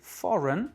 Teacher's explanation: R-E-I-G-N, n'est pas accentué puisque c'est for qui est accentué. Foreign, R-E-I-G-N se prononce run. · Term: réduction vocalique